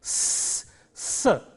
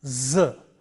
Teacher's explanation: The next pair is, this is S and Z. The first one is a voiceless sound, S, S, and the second one is a voice sound, Z